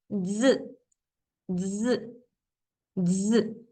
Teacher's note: se pronuncia como una S sonora, similar al zumbido de una abeja. Z, z, z. Tu lengua tiene que tocar el paladar superior para provocar esta vibración con tus dientes. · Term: sonido de la Z